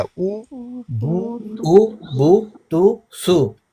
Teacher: होंठों को सही मुकम्मल गोल करके अदा होता है। अगर हम होंठों को नामुकम्मल गोल करें या गोल ना करें तो फिर ये सही अदा नहीं होता।